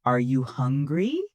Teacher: My voice goes up on hungry.